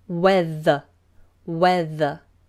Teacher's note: we have the W which is rounded lips and then th tongue out